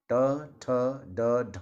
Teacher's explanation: इन सभी वर्णों का उच्चारण मुर्धा से किया जाता है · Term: मुर्धन्य